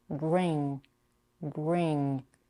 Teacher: you need to raise the back of your tongue up and almost block the air without releasing it